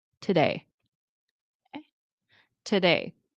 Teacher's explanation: And notice that to in today, it's reduced to today.